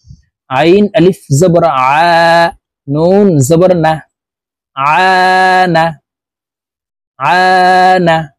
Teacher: আমরা এই আইনকে হালুকের মধ্যখান থেকে চাপ দিয়ে উচ্চারণ করবো